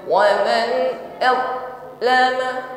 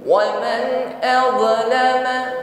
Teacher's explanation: wad sifatnya rakhawah, maka jangan putus atau tertahan saat mengucapkannya. Yang kedua, jangan sampai dipantulkan.